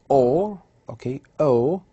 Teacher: So this sound O is located in the middle of the mouth, or it's in the mid, back of the mouth and rounded.